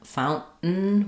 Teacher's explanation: we kind of stop the N and use two syllabic N's in that word